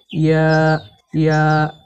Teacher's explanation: এই ইয়া হরফকে জিহবার মাঝখান থেকে নরম করে পড়তে হয়।